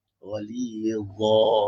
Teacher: Dha kena keluarkan lidah sikit je.